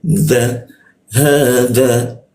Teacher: Nah, huruf za ujung lidah digigit dia.